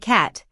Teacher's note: With voiceless consonants, like cat, the S will sound like a sharp S.